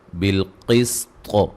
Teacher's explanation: دا پہ مد واجب ہے. بالقسط, قاف کو موٹا اور طا کو بھی موٹا ادا کریں گے, وقفاً قلقلہ کو خوب واضح کریں گے